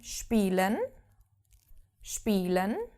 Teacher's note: if a word starts with an SP as in spelen spelen to play SP is SHP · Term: SHP sound